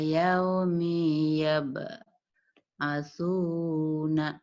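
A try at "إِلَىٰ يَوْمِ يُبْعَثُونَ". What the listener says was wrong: Bukan ya tapi domah Bu itu yuk. Lagi Bu. Bukan patah tapi domah. Ila yaumi yub'atsuna.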